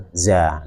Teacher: kalau huruf Zaza itu sifatnya adalah saofir yaitu berdesir